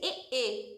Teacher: एक बोला जाता है कंठ प्लस तालू से तो इसे कंठ तालव्य बोलते हैं